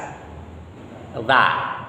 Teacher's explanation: Ujung lidah bertemu dengan ujung gigi seri atas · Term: huruf dzal